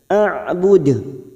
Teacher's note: di lain kalimat Mad Jaiz munfasil Li harakat kita panjangkan AUD huruf Ain sukun memiliki sifat tawasud Jangan samakan dengan Hamzah AUD ujungnya Kita pantulkan kuat karena ada huruf Dal yang mati